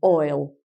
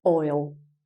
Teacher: in birmingham um if you say i'll i'll be there they actually they change the vowel sound and they say oil so it's like oil um if they say fine we say